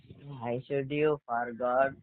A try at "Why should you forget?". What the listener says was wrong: ఫర్గెట్. గాట్ కాదు. ఓకేనా?